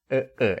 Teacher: essa pausa entre o primeiro a e o segundo a, é esta consoante, conhecida como pausa glotal